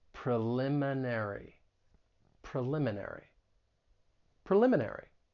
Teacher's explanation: the stress is on the second syllable, preliminary.